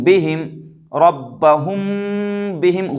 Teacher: ربہم کے میم ساکن کے بعد با آ رہا ہے تو ربہم کے میم پر اخفا کریں گے، ربہم بہم، ربہم بہم، غنہ نہیں کریں گے بلکہ غنہ کے ساتھ اخفا بھی کریں گے، ربہم بہم، با زیر بی، ہا میم زیر ہم، ربہم بہم، ان ربہم بہم ترمیہم بحجارۃ۔